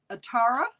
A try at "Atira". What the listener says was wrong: Well, I think it's Atira. Because there's an I there.